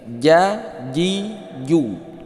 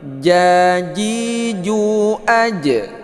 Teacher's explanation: Jangan sampai keluar angin. Dia itu tidak hamas. Makna hamas itu keluar angin, huruf jim.